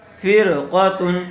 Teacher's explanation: یہاں را ساکن سے پہلے زیر آئی ہوئی ہے، اس لیے را کو باریک کر کے پڑھیں گے۔